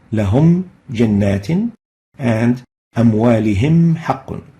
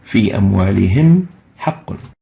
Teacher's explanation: keep both the Meem Sakinah and the following letter fully exposed, which means pronounced clearly without any modification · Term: idhar